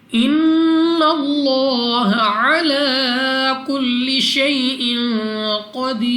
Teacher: ان اللہ نون مشدد غنہ کر کے پڑھیں گے. لام آف اللہ سے پہلے حرف پر زبر, تو اس لام آف اللہ کو بھی پر یعنی موٹا پڑھیں گے اور دوسرا لام کو 2 سیکنڈ تک لمبا کرنا ہے.